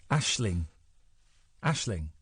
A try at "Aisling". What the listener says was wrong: Aisling. You're saying ing. I wouldn't pronounce the G.